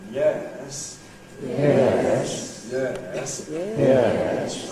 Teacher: the fall rise starts in the middle, goes down, and comes up again.